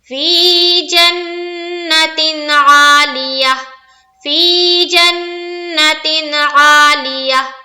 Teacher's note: فی میں کھینچا، نون میں تھوڑا دیر لگانا ہے، اور تین میں تو کچھ نہیں کرنا ہے، بالکل سمپل پڑھ کے نکلنا ہے، اسی کو کہتے ہیں اظہار